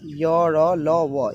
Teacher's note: ऐसे व्यंजन वर्ण जिसे बोलने में कम समय लगता है और मुख गुहा से कम प्राणवायु निकलती है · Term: अल्पप्राण